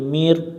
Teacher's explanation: নুন সাকিনের বাম পাশে র অক্ষর পাইলে ইদগম করে পড়তে হয় র মিলবে বা এর সাথে রব র অক্ষর মোটা করে পড়তে